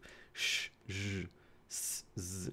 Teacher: Turbulent airflow, meaning there's this very, very, very narrow passage that air can continuously flow through. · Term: fricatives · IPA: [ʃ] [ʒ] [s] [z]